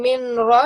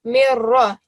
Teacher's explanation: And same here, rather than saying min ra, you will say mirra. You will join the meme straight to the ra.